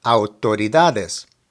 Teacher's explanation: The stress of the word is on the DA.